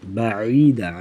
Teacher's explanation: بعیدا عین کی آواز گلے سے ادا کریں گے